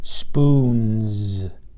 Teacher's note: Spoons has an N in front of this, and that's voiced, N, so that says Z.